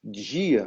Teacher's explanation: essa palatalização esse t no português do Brasil é justamente esse contato com as línguas africanas isso quando eu · essa palatalização, esse ch no português do Brasil